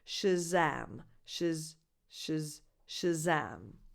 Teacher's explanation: The stress is on the second syllable, so that vowel, the second vowel is defined